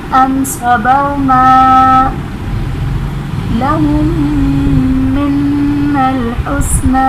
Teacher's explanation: میم ساکن کے بعد دوسری میم ہے ادغام شفوی کا قاعدہ. میم اور نون دونوں مشدد ہیں تو یہاں پر ہم نے غنہ کرنا ہے